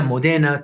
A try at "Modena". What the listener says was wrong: Modena, not Modena. But I mean, you could correct probably, what, 27 words that I mispronounced today with this stress, wrong stress, but just to say this when it's Modena.